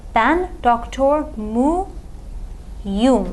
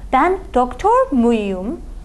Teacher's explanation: Turkish does not like to have two vowels next to each other. So you are required to insert a Y between this question particle and this personal suffix. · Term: buffer Y